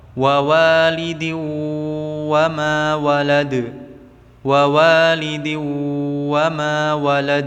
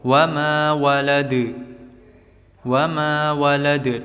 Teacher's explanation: yang dal suara pantulannya mendekati huruf e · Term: qalqalah kubra